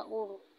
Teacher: रा से पहले पेश है तो हम उसको भी पुर पढ़ेंगे, थोड़ा मोटा करके।